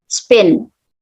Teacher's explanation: And then this pin is unaspirated, so it's pronounced spin.